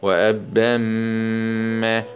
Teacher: باء شدة فتحتين مع الإدغام بغنة في الميم المشددة مع الفتح لأن الميم من حروف كلمة ينمو وأبم نقف عليها مد عوض